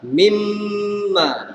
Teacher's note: Nun mati hilang sebab dia masuk dalam min.